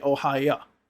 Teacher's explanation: a lot of Russian speakers in English and they pronounce Os as ah. Instead of saying oh they'll say ah.